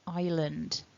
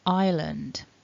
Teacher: the first syllable is the strongest syllable island so that first syllable then it's a double vowel i